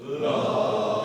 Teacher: That's a neutral vowel. It's in the middle back here. It's not schwa sound, right?